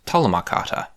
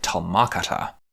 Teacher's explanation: it feels most natural to me that the stress would be on the first syllable